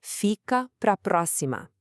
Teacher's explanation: We have this enthusiastic peak right at the start with fi, a little valley with capra, and then another big peak with pro before cascading down the cima. It's like a roller coaster. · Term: wave of emphasis